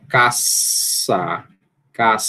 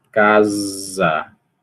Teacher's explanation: som S, que é desvozeado, e você tem um som Z, que é vozeado